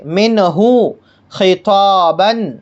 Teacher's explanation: نون ساکن، یہ نون ساکن ہے اور نون ساکن کے بعد یہ ہا ہے، نون ساکن کے بعد ہا ہے، اس لیے نون ساکن کو ظاہر کر کے بغیر غنہ کے پڑھیں گے، اسے اظہار کہتے ہیں۔